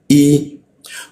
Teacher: Hamzah I ditenggorokan bagian bawah